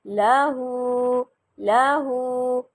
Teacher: ٹھیک ہے، اب مزید مثالیں دیکھیں، لام زبر لا، ہا الٹا پیش ہو، لہو، لہو، لام کو لمبا نہیں کیا میں نے، صرف ہا کو لمبا کیا۔